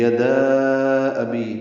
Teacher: دال کو لمبا کریں گے کیونکہ الف مدہ کے بعد دوسرے کلمے میں حمزہ آیا ہے تو مد منفصل بنی ہے۔